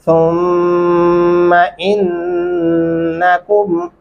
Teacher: सा नरमी से अदा करेंगे और गुन्ना भी करेंगे